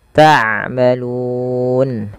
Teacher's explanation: Ma panjangkan 2 harakat karena ia mad tabi'i